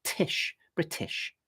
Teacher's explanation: I've got an aspirated, somewhat sibilant t sound like that. Tish, British.